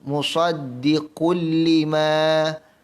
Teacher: Perhatikan, musaddiqul, tanwin bertemu dengan lam, idgham bila gunnah terus masuk